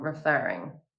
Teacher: become referring as the last syllable is stressed